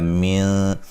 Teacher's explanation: من نون ساکن کا باریک اخفا ہے